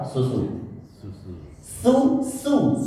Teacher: Itu cara mengucapkan yang benar. Jadi desisnya kecil sekali. Maka orang-orang Arab ketika mendengar kita membacakan huruf sin, Pak, dia mengatakan itu kamu baca shad.